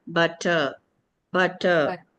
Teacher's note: the ra sound should not be articulated at the end of the word